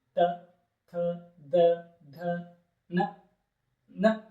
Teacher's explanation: ನಮ್ಮ ದಂತಗಳಲ್ಲಿ ಹುಡ್ತಾವ. ಇದಕ್ಕೆ ನಾವೇನುತ್ತೇವೆ? ದಂತ್ಯಾಕ್ಷರಗಳು ಅಂತ ಹೇಳ್ತೇವೆ.